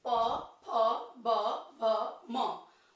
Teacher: होठ बार बार हमारा एक दूसरे से टच होगा, अलग होगा, टच होगा, अलग होगा। तो इसलिए इसे स्पर्श व्यंजन बोलते हैं, क्योंकि कहीं न कहीं कोई न कोई हमारे मुंह का पार्ट एक दूसरे से टच करता है। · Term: प वर्ग